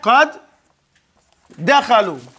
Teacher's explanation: This is idgham, because the dal is into the other dal.